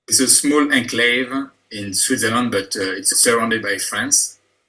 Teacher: he says enclave with a long syllable on the second syllable. And in English, we stress that on the first syllable, either using the French enclave or the English enclave, both of which are acceptable pronunciations.